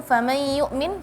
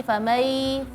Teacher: sebagian beralih ke dengung atau ke rongga hidung